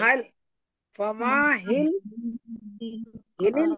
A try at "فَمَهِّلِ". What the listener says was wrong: हिल नहीं है फमा हिल सुनिए मुझे सुनिए आप लोग बोलिएगा नहीं सुनिए फमा हिल फमा हिल फमा हिल देखिए मा हा दोनों को मिला रही श्रद्धा हो रहा है फमा हिल काफिरीन अमहिलहुम रुवैदा ठीक है